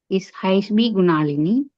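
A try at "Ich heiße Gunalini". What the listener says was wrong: ஹைஸ்ட் குணாலினி. இஸ் ஹைஸ் குணாலினி. இதுல இந்த பி மாதிரி இருக்கிறது வந்து ஜெர்மன்ல இருக்கிற ஒரு ஸ்பெஷல் ஆல்பபெட்.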